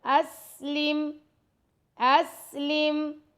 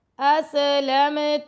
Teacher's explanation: سین کے اوپر دیکھیں سکون آ گیا, سیٹی کی آواز پیدا ہوگی, کلکلا نہیں کرنا